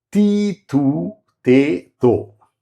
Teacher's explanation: All dental with different vowels ordered roughly as high front, ta, high back, mid front, mid back.